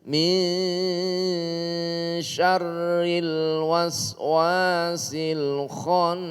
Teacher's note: Samar antara nun dengan shin, munculnya samar itu karena ada mendengung. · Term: ikhfa